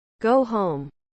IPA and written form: gou houm (Go home)